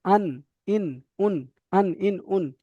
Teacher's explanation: তারপরে দেখেন 9টা, নুনের মাখরাজ, নুনের মাখরাজ হচ্ছে জিভের আগা এবং তার বরাবর উপরের তালুর সাথে লাগিয়ে, জিভের আগাটা দাঁতের গোড়ার একটু উপরে লাগবে নুন